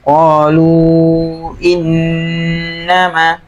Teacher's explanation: Nun tasydid coba ditekan agak lama. Qalu innama.